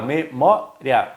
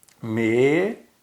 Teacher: eu posso transformar esse ditongo crescente num hiato